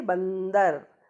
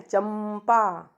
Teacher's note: जब हम अनुस्वार शब्द बोलते हैं तो इसके अंतर्गत आधा ना और आधा माँ की आवाज़ भी आती है। जैसे बंदर, तो बंदर में लगी तो बिंदी है अंग की, है ना, लेकिन आवाज़ किसकी आ रही है, ना की।